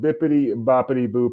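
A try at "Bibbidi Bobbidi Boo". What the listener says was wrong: It says Bibbidi. Bobbidi. You said it with P's, yes.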